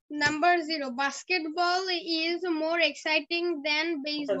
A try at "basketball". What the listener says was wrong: এটা বাস্কেটবল না উচ্চটা বাস্কেট না বাস্কেট একটু লম্বা হবে বিয়ের উচ্চারণ জোরে করতে হয় দুই ঠোঁট দিয়ে জোরে করতে হয় বাস্কেটবল